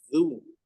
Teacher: huruf dza di sini makhrajnya ya terdapat pada ujung ujung lidah bertemu dengan gigi seri depan zu maka di sini ketika tempelkan terlebih dahulu baru di lumahkan.